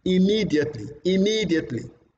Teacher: the second syllable of that word takes more prominence compared to others